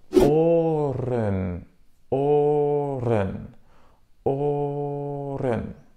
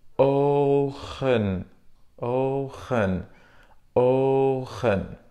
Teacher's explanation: le R est un son roulé ou guttural, tandis que le G est produit en frottant l'arrière de la langue contre le palais. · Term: le son R